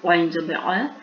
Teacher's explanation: ائیں حروف وسط حلق سے ادا ہوگا